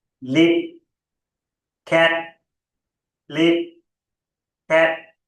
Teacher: By not sounding out those final sounds, releasing the sound, they sound almost the same.